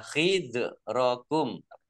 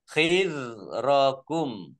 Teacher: Masing-masing dibaca panjang 2 harokat. Khidrokum, zal sukun, bukan kolkolah, jangan dipantulkan